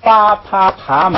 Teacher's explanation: 个记一下啊。第一种，巴帕爬麻，就是那个字母表的第4行，那四个不能跟那个爬不能加前加字爬，为什么呢？因为这四个呀，巴啪爬麻全是爆破音，也叫破裂音，或者也叫这个堵塞音， 全是把嘴唇闭起来，突然打开，气流突然喷出，发的这个爆破音